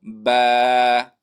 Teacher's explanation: بیا په با کې موږ دوه خبرې کړې وې چې با به د یو الف په مقدار راکاږو او با د لمدې د شونډو د لمدې حصې نه چې دی هغه با ادا کېږي